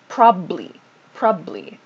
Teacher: so you might also hear just the first bee pronounced